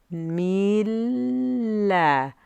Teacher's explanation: we hold on to that first lamb for just a moment longer until we can then say the second lamb and that joins the two together so now we have the